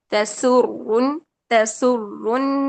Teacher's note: र मुशद्द में तकरार कम करें · را مشدد میں تکرار کم کریں